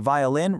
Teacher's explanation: V really vibrates on your lips.